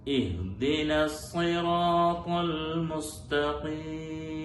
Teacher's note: സ്വീ എന്നുള്ള ചുണ്ട് കൂടി ഒരു വാവ് വരുന്ന രീതി ഒരിക്കലും ഉണ്ടാവാൻ പാടില്ല.